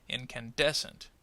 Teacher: And can is probably going to be the secondary stress.